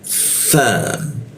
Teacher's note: huruf sa, ujung lidah digigit ya